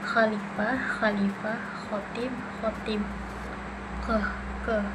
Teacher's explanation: bagian belakang lidah mendekati velum, udara keluar dengan gesekan tanpa suara. Bunyinya bunyi geser tanpa suara.